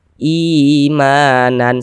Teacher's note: Sehingganya i dibaca panjang menjadi mad badal, panjangnya 2 harokat